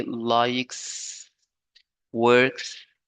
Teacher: Can be pronounced like s, and s is a voiceless sound.